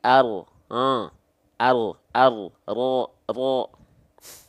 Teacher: jadi bagian punggung lidahnya bukan bagian ujung lidahnya